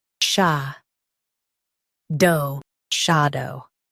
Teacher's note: Emphasize sha and keep dow light.